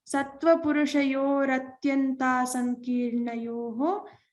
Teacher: Similarly, in atyanta asankirnayoho, atyanta sankirnayoho. So now when we combine and chant the whole sutram, sattva purushayoho combined with atyanta sankirnayoho, we have to replace this visarga with a ra